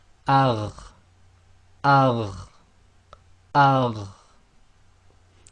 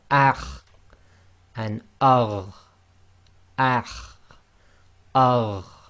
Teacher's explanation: The top of the throat then is the letter kha and ghain.